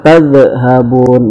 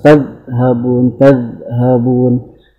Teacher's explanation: Tidak ada qalqalah, dha tidak boleh dipantulkan.